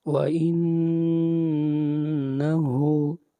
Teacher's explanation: آیت نمبر 8، وَإِنَّهُ، ان نون کے اوپر اخفا، آواز ناک میں جائے گی